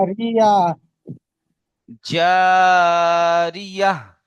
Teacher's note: জি, এখানে আমি থামছি, তাহলে কেমন পড়তে হবে? এই গোলতাটাকে আর তা পড়া যাবে না, হা করে পড়তে হবে